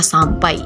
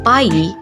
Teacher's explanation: atau ai pada kata sampai di mana pada suku kata pai vokal A dan vokal I tidak dapat dipisahkan menjadi pa i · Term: diftong Ai